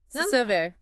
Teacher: the stress is on the second syllable, ver.